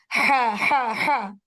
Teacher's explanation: I am using my lips to pronounce बा बा. ठीक, लेकिन हा को मैं हलक से अदा कर रही हूँ